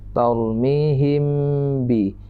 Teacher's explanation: Samar-samar berdengung di bibir. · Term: ikhfa syafawi